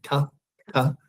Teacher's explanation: It's not actually with a puff of air in Greek, so just be ta, ta, not ta.